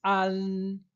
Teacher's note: Então, para pronunciar a N, lembre-se, o A ele tem que ser aberto an, e termina com a língua entre os dentes ou com a língua atrás dos dentes